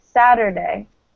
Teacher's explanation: especially in American English, we tend to pronounce the T as a D.